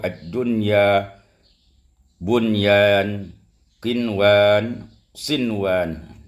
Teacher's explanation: nun mati bertemu dengan ya, nun mati bertemu dengan wau dalam satu kata tidak didengungkan tapi dibaca dengan izharusya izhar ee ee izhar mutlaq. ada empat